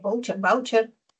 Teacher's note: Esta palabra tiene la mayor fuerza de voz en vau.